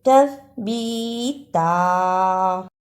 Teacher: تا کو ادا کرنے کا طریقہ، زبان کی نوک کو سامنے اوپر کے دو دانتوں کے کناروں سے ملائیں اور بولیں